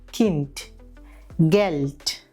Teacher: ഡേ എന്ന അക്ഷരം ഒരു വാക്കിന്റെ അവസാനത്തിൽ വരുമ്പോൾ ഇംഗ്ലീഷിലെ ടിയുടെ ഉച്ചാരണം ആയിരിക്കും അവിടെ വരുന്നത്